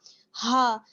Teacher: ہا ہے اور ہا پر آپ دیکھ رہے ہیں پیش کی حرکت ہے اور ہا کا مخرج حلق کا سب سے نیچے والا یعنی سینے کی طرف والا حصہ